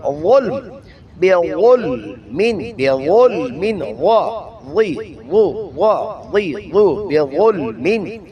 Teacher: زبان کی نوک اوپر والے دانتوں کی نوک سے اور زبان کی جڑ اور زبان کے سنٹر کو اوپر اٹھائیں گے جس سے آواز بھاری اور موٹی ہو جائے گی